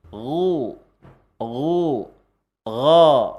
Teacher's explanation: Ghin ketika fathah dia gha. Ketika domah dia gu. Jadi terangkat lidahnya